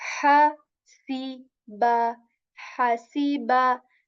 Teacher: Ha letter comes from the middle portion of the throat.